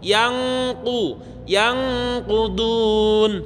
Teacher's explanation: Nek yang ku itu berarti suara yang bertemu dengan kaf. Kalau suara bertemu dengan qaf maka menebal, suaranya menggemuk. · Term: ikhfa